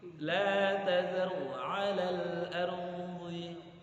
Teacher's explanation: Ro ada dua di situ, tebal.